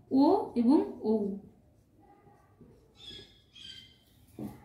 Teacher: ও এবং ঔ এই দুটির উচ্চারণ স্থান হচ্ছে কণ্ঠ ওষ্ঠ কণ্ঠ এবং অর্থাৎ কণ্ঠ থেকে উচ্চারিত হচ্ছে এবং অষ্ঠ স্পর্শ করছে